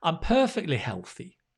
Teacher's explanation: the t sound kind of drops when we say perfectly